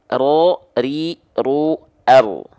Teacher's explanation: Nah, jadi huruf ro itu dia punya sifat namanya takrir, warro wabi takririn ju'il. Ya, getarannya walaupun dia sedikit tapi tetap tegas, lugas dan jelas.